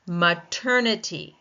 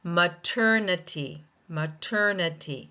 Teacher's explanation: Second syllable taking the stress.